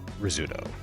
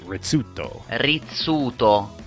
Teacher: Americans clearly should know that the double Z in Italian words is a TS sound